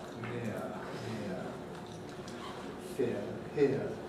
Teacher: This vowel typically starts about I, which is why we write it like that, but it moves towards near, near, near, here, here.